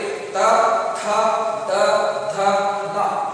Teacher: ಹಾಗೆಯೇ ತವರ್ಗ ತಾಲು ಏನಿದೆ ಅದೇ ರೀತಿ ಇದು ದಂತ ಅಂತ ಹೇಳ್ತೀವಿ. ಈ ತವರ್ಗ ಅಕ್ಷರಗಳು ಉಚ್ಚಾರಣೆ ಆಗಬೇಕಾದ್ರೆ ಮೇಲ್ಭಾಗದ ದಂತ ಏನಿದೆ, ದಂತಕ್ಕೆ ನಾಲಿಗೆ ಸ್ಪರ್ಶವಾಗುತ್ತೆ. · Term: ದಂತ್ಯ ಅಕ್ಷರಗಳು